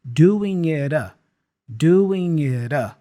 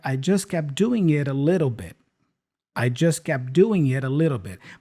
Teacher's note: I can connect the T with the a using that flap sound